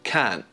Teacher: 'Can't' uses the thing that we've been talking about; elision. We drop the /t/ sound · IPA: /kɑːnʔ/